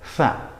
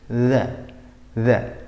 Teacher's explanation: Cuma kalau fa itu kan berobosnya nemen, fa. Kalau zal itu ditahan, berobosnya hanya sedikit atau hampir nggak berobos.